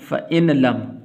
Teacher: یہ نون درمیان میں ساکن ہو جائے گا اور یہ لام کے ساتھ ملے گا.